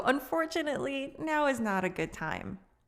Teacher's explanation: when we start with that adverb, unfortunately, typically native speakers will kind of stay on it a little bit longer just for that emotion